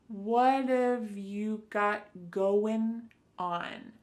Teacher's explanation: Instead, you're going to hear a reduction or a contraction of the first two words, just like we saw with the previous example, what of. So what and have are going to be pushed together.